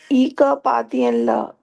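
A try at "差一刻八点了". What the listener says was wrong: ई ख पातियन ला ख क नहीं ख बोलो ये क नहीं ख बोला था छा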